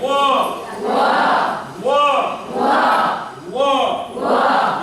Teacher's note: इसका उच्चारण स्थान दंतोष्ठ है